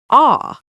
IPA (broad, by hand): ɔː